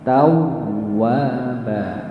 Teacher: Wawunya ada tasydidnya, maka dibaca tawwa, ditekan